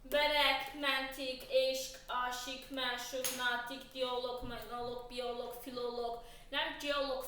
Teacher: Axırı loqdan bitirsə, bu alınma sözlərdə q hərfi k səsini verəcək